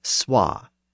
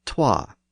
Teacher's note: a W sound between the initial consonant and the vowel. So the word so was originally swa, and the number 2 was originally twa.